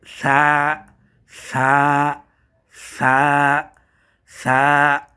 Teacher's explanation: আমরা যখন ছাকে পড়বো তখন অবশ্যই অবশ্যই খেয়াল রাখতে হবে যেন আমাদের জিহ্বার আগা এবং দাঁতের আগা এই দোনোটা একসাথে লাগে দোনোটা একসাথে লাগিয়ে পড়তে হবে সা প্রয়োজনে আমরা আয়নার সামনে দাঁড়িয়ে